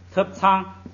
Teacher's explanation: 特本来是降调，在第一个音节呢就是叫前不降，所以变成了平声